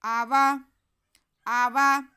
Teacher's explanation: حمزہ پہ زبر اور واو پہ بھی زبر، دونوں کو ایک جیسا ہی پڑھنا ہے، کھینچنا نہیں ہے